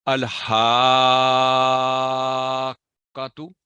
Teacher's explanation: الحاقتو، الحاقتو نہیں، الحاقتو، یعنی قاف پر سٹرس دے کے اس کی فتح پڑھ کے پھر آگے